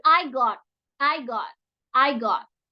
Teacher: bunyinya seperti o antara o dengan A